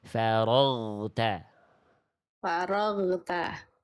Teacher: bunyi suara huruf ginnya diantar. Jangan sampai menyisakan bunyi e di ujung. Faragta. Faragta. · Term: gin sukun